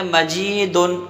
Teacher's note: اب اگر مجیدن تو میم پر زبر ہے بغیر کھینچ پڑھیں گے، جیم کو ایک الف کے برابر کھینچیں گے کہ اس کے بعد یا ہے۔